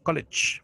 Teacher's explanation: la G con la E al final suena como una SH, college, o una Che, college. ¿Sí?